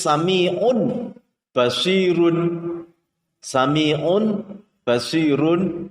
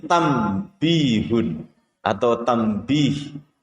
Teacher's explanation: huruf nun atau tanwin itu membacanya ketika itu dibalik atau ditukar menjadi huruf mim. Contohnya adalah di kalimat tertulis sami'un basirun, sami'un basirun, maka membacanya menjadi sami'um basir, membacanya menjadi sami'um basir. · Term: iqlab